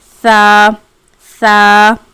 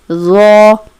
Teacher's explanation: سا کو ہم باریک پڑھتے ہیں، سا سا، اور ذو کو پر یعنی کہ موٹا پڑھتے ہیں